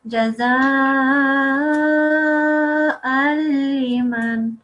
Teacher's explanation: you have done idgham kamil, complete assimilation, and you have blocked out the noon sound